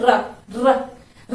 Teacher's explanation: र में जीवा 2-3 बार कंपन कर रही है, तो जिसमें जीवा 2-3 बार कंपन करती है उसको क्या कहते हैं, प्रकंपित।